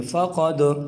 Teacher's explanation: آگے دیکھیں فقد، یہاں پر دیکھیں دال حروف قلقلہ میں سے بھی ہے اور اس کے اوپر جزم بھی ہے، تو قلقلہ کر کے یوں پڑھیں گے